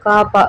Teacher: பா என்னும் எழுத்து இதழ்கள் இரண்டும் ஒட்டுவதால் பிறக்கிறது · நாக்கின் முதற் பகுதி மேலினத்தை ஒட்டும்போது கா அப்படின்ற எழுத்து பிறக்கிறது